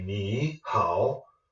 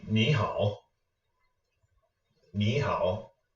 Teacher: to go through the trouble of saying two third tones together you can just change the first third tone to a second tone it's much more smooth and it retains its meaning